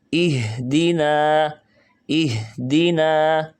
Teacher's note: یعنی گلا وائبریٹ کر رہا ہے کہ آواز گلے سے پیدا ہو رہی ہے